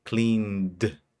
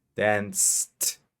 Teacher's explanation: La N sí vibra y la S no vibra. Y cuando vibra, usamos el sonido de D. Cleaned. Y cuando no vibra, usamos el sonido de T.